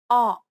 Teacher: The next vowel sound is O P C. It's a short open O sound like the O in not. Your mouth should be opened wider than the previous O sound.